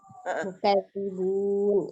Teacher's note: Jadi dibaca dengan tipis ya. Tidak ditekan mukadzi, dia hanya ditasdid saja, tapi tidak diangkat pangkal lidahnya. Jadi tetap terbaca dengan tipis.